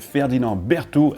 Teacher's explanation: both D’s are silent